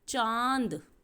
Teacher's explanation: चा बोलते समय आवाज़ मुंह और नाक दोनों से आ रही है, इसीलिए चा के ऊपर हम चंद्र बिंदु लगाएंगे और शब्द बनेगा चांद। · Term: अनुनासिक